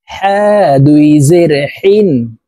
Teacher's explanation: হা হরফ হলকের মধ্যখান থেকে উচ্চারণ হবে কারণ হার মাখরাজ হলকের মধ্যখান থেকে হবে হা দুই জের হিন